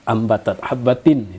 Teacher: dalam hukum tajwid Hamza dengan Alif itu sama He nah jadi tanwin bertemu dengan Hamza itu hukumnya izhar dinyatakan bunyi tanwinnya dinyatakan jelas